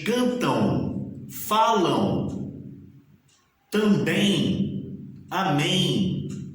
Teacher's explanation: é nítida a presença né de um ditongo nasal